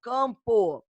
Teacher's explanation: Campo, esse A, essa vogal A, nasalizada, dígrafo vocálico.